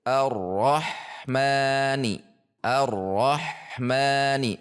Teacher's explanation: Ah tipis tidak masih tebal sehingga berbunyi roh roh. Antara ah dengan ma tidak ada jeda